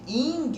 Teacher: Esse i, ele não tem um som de i muito agudo não, né? De ing, por exemplo.